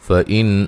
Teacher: نون ساکن کا اظہار ہے، غنہ نہیں کریں گے